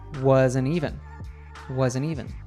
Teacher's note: because the following word, even, starts with a vowel sound, it gets naturally linked to the N sound from wasn't